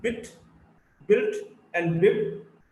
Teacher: Then we have the sound B, is a voiced bilabial plosive